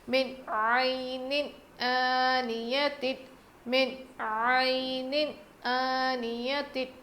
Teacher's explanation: نون ساکن کے بعد حروف حلقی میں سے عین آیا ہے، اسی لیے ہم نون کی آواز کو ظاہر کر کے پڑھیں گے۔ من عین آنیت، من عین آنیت، عین کی آواز بالکل کلیئر آنی چاہیے۔